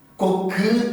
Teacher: ஊ என்று ஒலிக்க வேண்டிய அந்த ஒலி இ என்றுதான் ஒலிக்கிறது, குறுகி ஒலிக்கிறது.